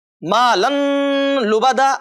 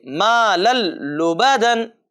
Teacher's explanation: مالن لبدا ایسا نہیں پڑھیں گے، بلکہ اس کو بغیر غنہ کے ساتھ ملا کر کے پڑھیں گے